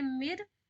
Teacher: तो देखिए रा से जस्ट पहले नून मुशद्दा आई तो नून साकिन आई है तो नून साकिन को तो नहीं देख पाएगी, लेकिन उससे पहले जेर आई है तो जेर के अकॉर्डिंग एक बार रा को बारीक पढ़ेंगे